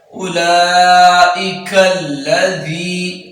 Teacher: ذال میں سیٹی نہیں، سیٹی کے بغیر دال کو ادا کریں گے۔